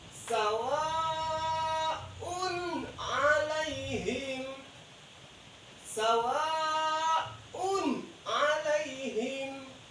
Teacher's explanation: di sini ada domah tain ketemu dengan huruf ain berhukum ijhar, dibaca jelas